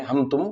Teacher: قاعدہ نمبر 3 اظہار شفوی، میم ساکن کے بعد با اور میم کے علاوہ نہ با ہو نہ میم ہو، اس کے علاوہ کوئی بھی حرف، خاص طور سے جو حروف آتے وہ واو یا فا آتا تو میم کو ظاہر کر کے پڑھنا چاہیے، نہ گنہ ہوگا نہ اس میں اخفاء ہوگا، میم کو ظاہر کریں گے، جیسے ہم اردو زبان میں ہم تم کہتے ہیں۔